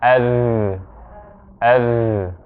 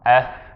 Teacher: There's vibration going here for the dhal that isn't for the tha. When we say this, there's vibration right here.